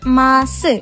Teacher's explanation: Vokal depan luas A mengalami penengahan vokal kepada I pepet dalam dialek Perak